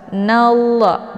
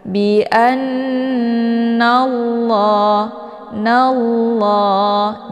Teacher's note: Cara bacanya, nunnya dileburkan ke dalam huruf lam. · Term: idgham syamsiyah